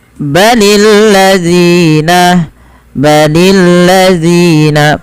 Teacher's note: panjangkan Z sepanjang dua harakat karena dia ada Mad thii yaitu berupa apa berupa adanya huruf